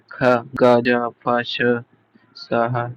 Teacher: संघर्षी शब्दों के उच्चारण में मुख द्वारा बहुत संकरा होता है, जैसे सी आवाज होती है, जैसे सी की आवाज होती है, ख, ग, ज, फ, श, स, ह, ये संघर्षी शब्द है, ठीक है।